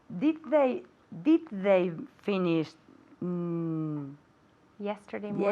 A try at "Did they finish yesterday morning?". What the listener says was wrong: Are you saying did they finished? No T, right? Okay, no T there, okay? Because we have the did, right?